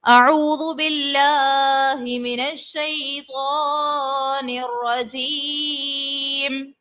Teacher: واو ساکن سے پہلے پیش ہے واو مدہ, اور کھینچنا بھی ہے ایک الف کی مقدار. پھر لام پر کھڑی حرکات ہے, اور ایک اور بات یہاں پر آ گئی ہے کہ لام کو پر پڑھیں گے یا باریک پڑھیں گے.